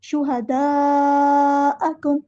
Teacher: connected مد ہے، مد متصل ہے، 4 یا 5 کاؤنٹ ہمیں لمبا کرنا ہے